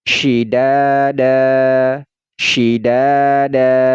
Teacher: Jadi ini tidak dibaca dan. Nah, ini tidak dibaca dan, tetapi dibaca dah dan dipanjangkan 2 harokat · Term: mad iwad